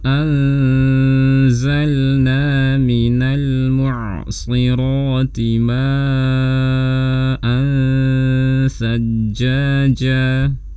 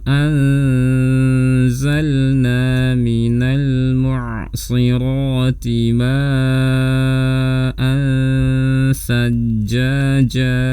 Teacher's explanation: Kemudian di sini kita bisa lihat ada tanwin fathah bertemu dengan sa, ini juga ikhfa. Jadi posisikan saat melafalkan dengung makhrajnya di makhraj huruf sa.